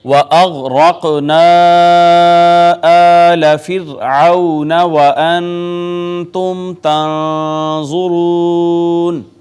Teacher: غین حروف مستعلیہ میں سے پر کر کے ہم نے اس کو پڑھا، را کو بھی مفخم پڑھا. قاف قطب جدن میں سے آ گیا لہٰذا یہاں پہ بھی ہم کلکلہ کریں گے، ساکن ہے.